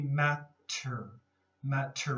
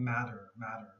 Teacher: the middle have more of a d sound matter matter okay correct pronunciation would be matter matter with a t sound but definitely a lot of people will be saying matter matter okay with a d sound